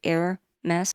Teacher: the French pronunciation is closer to Air-mess with the H silent